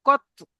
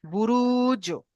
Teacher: একটু কলকলা করবেন, ধাক্কা লেগে একটু কলকলা করবেন